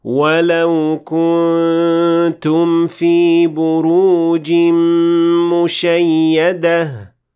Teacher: That's right, the noon in the word kuntum, which is an indication that the noon will not be fully pronounced in this case because of ikhfa